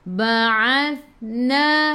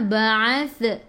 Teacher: Ingat huruf sa jangan melantun. Bila ada sukun tahan. Ba'athna hujung lidah keluar pada gigi depan.